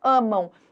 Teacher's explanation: O ditongo nasal, o som sai pelas fossas nasais